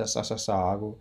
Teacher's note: त्यसै गरी महाप्राण चाहिँ वर्गको अब बाँकी रहेको दोस्रो र चौथो बाँकी छ, दोस्रो र चौथो अनि सल स श स ह यी वर्णहरू चाहिँ महाप्राणबाट उच्चारण हुन्छ। यिनीहरूको चाहिँ सास धेरै लाग्छ